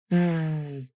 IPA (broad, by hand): z